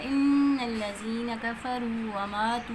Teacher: نون مشدد کا غنہ ہے، ناک میں آواز لے کے جائیں گے